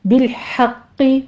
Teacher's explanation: بالحق ہا وسط حلق سے ادا کرتے ہوئے قوف کو تشدید ہے، سختی کیجئے اور پر پڑھنا ہے اس کو